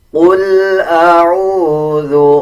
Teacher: قاف کو پر یعنی موٹا پڑھا جائے گا. لام کے اوپر جزم ہے، قاف اور لام کو ملا کے پڑھا جائے گا.